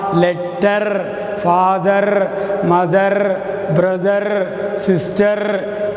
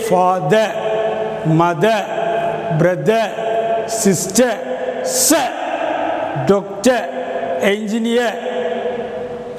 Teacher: Whenever the letter R is ending with any word, this should not be pronounced.